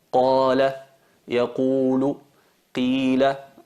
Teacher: Alargamos, no es una vocal corta, sino es una vocal larga, y cuando se trata de una vocal larga alargamos durante 2 tiempos la letra en sí. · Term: el alargamiento natural